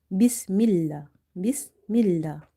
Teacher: Before the letter lam in the word Allah, we have kasra, so we will read this lam light here.